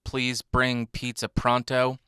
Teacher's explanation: you can hear that gust of air hitting the microphone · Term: plosives